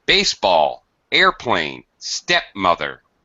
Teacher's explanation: a high or primary stress on the first word and secondary or low low pitch on the second